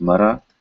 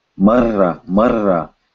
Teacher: So what happens when you combine two ras? Now this is interesting. Now you get to roll your tongue. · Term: Tongue roll